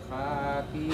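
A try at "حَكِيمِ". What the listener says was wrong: Hakimi. Ha yang ini pendek, Pak. Tidak ada alif. Hakimi.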